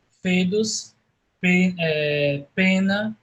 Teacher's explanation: nós temos o OE soando como lê, né? Como E fechado de ler.